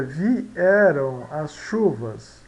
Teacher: Um som vocálico, e aqui outro som vocálico, né? Então nós temos 2 sons vocálicos, e em sílabas separadas nós temos um hiato.